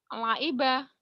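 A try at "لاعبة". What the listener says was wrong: Langiba. Laiba. Ain. Laiba. Laiba. Ain. Laiba. Ainnya ya belum mantep. Laiba.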